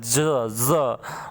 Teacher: ल, स, ज, ज जो होता है जिंदगी जैसे लिखा जाता है, ज, ज, उसमें साउंड थोड़ा सा गनगनाहट होता है, उसमें वाइब्रेशन होता है